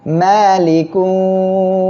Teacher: অবস্থায় সাকিন দিয়ে পড়বেন আর এখানে আমরা ওয়াকফের সময় সাকিন করব এক আলিফ মদের পরের অক্ষরে ওফের কারণে যদি সাকিন হয় তাহলে মদের আরজি হবে আমরা তিন আলিফ টেনে পড়বো